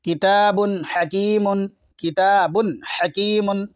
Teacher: تنوین کے بعد حا آ رہا ہے حروف حلقی کا، اس لیے ظاہر کر کے پڑھیں گے